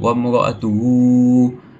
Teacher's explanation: Hukum tajwid yang kita boleh jumpa ialah antaranya adalah mad sila qasirah iaitu pada perkataan wamraatuhu. So kita perlu panjangkan ah hu dengan dua harakat